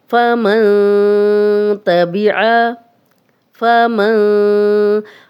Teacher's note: یہاں پہ جو غنہ ہم کریں گے وہ زبان جو ہے وہ تالو کے ساتھ نہیں لگے گی